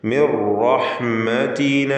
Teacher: സാക്കിനത്തായ നൂൻ ശേഷം റാ പൂർണ്ണമായും ലയിപ്പിച്ച് മണിക്കാതെ ഉച്ചരിക്കണം. ഇദ്ഗാം ബിഗൈരി ഗുന്ന കാമിൽ.